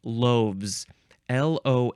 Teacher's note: The F becomes a V, and then you add the Z.